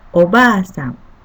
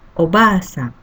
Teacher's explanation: Second character ba with same vowel sound a is pronounced as long vowel sound, like ba. If you read as they are in hiragana spelling, it could be ba-a, but we pronounce it as ba.